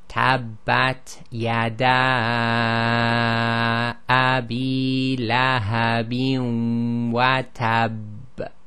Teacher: Okay, so what happened is, just normally as we do with all letters with the shadda, you have to hold it for about 1.5 counts. So we do the tab, hold for 1.5 counts, and then do the release, which causes the echo. So it's wa tab.